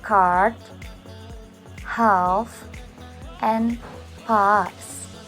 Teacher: This is an open vowel in the region of cardinal vowel number 5, a, but not as big as this.